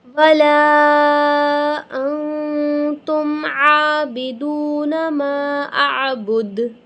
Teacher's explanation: لا اعبد ما تعبدون ولا انتم عابدون ما اعبد، لام الف مدہ 5 الف کے برابر کھینچیں گے، یہاں پہ ہم اخفا کریں گے، ٹھیک ہے، یعنی نون کی آواز کو ہم کلیئر پروناؤنس نہیں کریں گے، ناک کے اندر چھپائیں گے